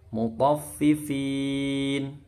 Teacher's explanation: fin ini panjang, bisa 2, 4 sampai 6 harokat ya. Mat arid lis sukun.